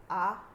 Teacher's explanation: जीभ अगदी थोडी उचलली गेली तर मुखविवर आकुंचित न होता मोकळे राहते. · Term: विवृत्त स्वर